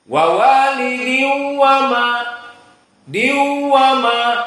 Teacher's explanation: Maka diu ini syahidnya dia dalam keadaan gunnah dari khayshum.